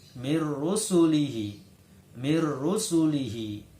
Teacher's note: Karena ini bacaan idgham bila gunnah, maka suara nun masuk ke dalam huruf ro. Jadi cara membacanya mir rusulihi.